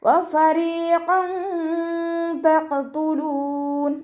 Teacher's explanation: തെൻവീനിലുള്ള നൂനിൻ്റെ സൗണ്ടിനെ മറച്ചു വെച്ചിട്ട് മണിച്ചോതി കൊടുക്കുക. വ്യക്തമായിട്ട് നൂനിൻ്റെ സൗണ്ടിനെ കേൾപ്പിക്കരുത്.